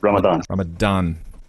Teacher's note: The D is a kind of an inflected D that is pronounced with the tongue between the upper and lower teeth.